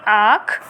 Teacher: इस ध्वनि का उच्चारण मुंह और नाक की सहायता से होता है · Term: चंद्रबिंदु